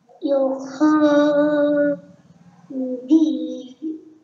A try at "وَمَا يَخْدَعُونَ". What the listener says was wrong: yo kha di u you forgot Yak. Pronounce like this. Wa ma yak. Wa ma yak da'una illa anfusahum. নো তুমি দেখো good ভাই ইয়াখে বলছো তুমি ইয়াখে কলকলা কলকলা হয়ে গেছে এখানে তোমার আর তুমি নাতে টান দিয়েছো নাতে টান নাই টান দেওয়া যাবে না গুড ভাই আবার